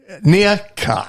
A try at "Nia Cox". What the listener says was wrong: No, you don't leave a space between the two names.